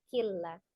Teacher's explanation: Idgham artinya dilebur, yang tadinya semula kin dibaca langsung ditasdidkan ke huruf lamnya killa. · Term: idgham bila gunnah